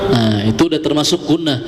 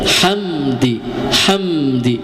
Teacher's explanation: Fasabbih bihamdi rabb ya, hamdi. Jadi huruf mim sukunnya itu terbaca jelas. Ya, jadi tidak boleh ditahan dulu.